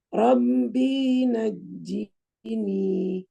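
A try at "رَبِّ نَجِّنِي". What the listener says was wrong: Dinya pendek Ustazah, hati-hati. B-nya pendek.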